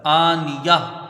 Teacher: نون کے نیچے زیر ہے، اس کو جلدی پڑھا جائے گا، یا کو یہاں ہا سے ملا دیا جائے گا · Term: ہا ساکنہ